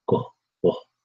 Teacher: there's a slight W sound after the G go whoa okay so it's quick air go and next one